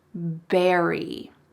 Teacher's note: He exchanged the V for the B sound.